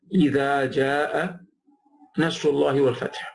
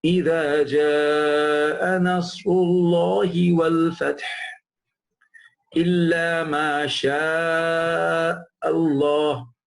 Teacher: because the hamza come after that ja, it is given at least 4 harakat